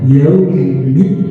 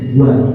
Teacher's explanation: Karena huruf waw makhrajnya ada di syafatain. Wa. Maka caranya dengan kita memoncongkan kedua bibir kita.